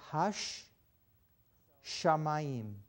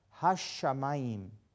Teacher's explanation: the way you stress it is hash shamayim almost like you you can almost hear two sheens in there so when you read it you will emphasize that letter hashamayim · it's almost like the letter was doubled so grammatically you can think of this letter as two of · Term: dagesh